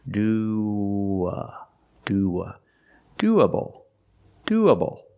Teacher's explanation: when you link these two vowels you have like a w sound in the middle W linking the vowels do do doable doable something you can